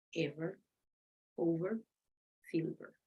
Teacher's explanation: it's labiodental. You join the lower lip with the teeth.